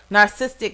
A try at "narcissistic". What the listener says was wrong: Missed the syllable, but we'll